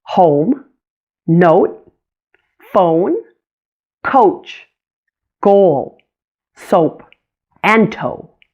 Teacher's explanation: the long O is also a diphthong, or a blend of two vowel sounds. O. Notice how it glides between an O and a U sound.